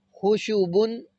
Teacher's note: ان میں خا کو موٹا پڑا جائے گا، شین اور با کو باریک